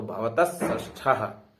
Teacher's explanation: ऐसे ही हम दूसरा देखते हैं, भवतस षष्ठः, भवतस, अब यहाँ पे सकार के बाद कौन सा स है, फिर मूर्धन्य स है। तो दंत सकार के बाद अगर मूर्धन्य स है तब भी क्या हो जाता है, मूर्धन्य स ही होगा।